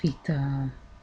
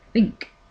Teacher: And here is theta, theta, which makes the sound when you use your tongue to touch your teeth